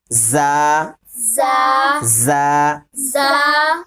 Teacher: زبان کی نوک اوپر نیچے دونوں دانتوں کے بیچ میں جب زبان لگائیں گے نا تب ایک سیٹی سی آواز آئے گی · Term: زا سین صاد